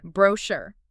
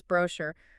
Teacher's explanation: the UK tends to put the stress on the first syllable, whereas the US tends to put it on the last syllable. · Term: French loanword stress pattern